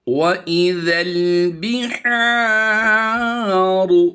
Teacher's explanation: रा की आवाज़ पुर होगी, रा पर ज़बर हो या पेश की अलामत हो तो रा को पुर पढ़ा जाता है